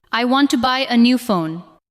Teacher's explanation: The important words are want, buy, new, and phone. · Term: stress